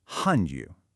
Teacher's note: It's a fourth tone and a third tone, a sharp fall, then a dip.